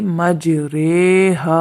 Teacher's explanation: یہ پورے قرآن مجید میں ایک ہی کلمہ ہے جس میں ہم نے امالہ کرنا ہے، یہ ری ہے، مجریہا اصل میں یہ تھا، لیکن یہاں پر امالہ ابو حفص کی روایت کے مطابق امالہ کیا جائے گا، تو اس کو پڑھیں گے مجریہا۔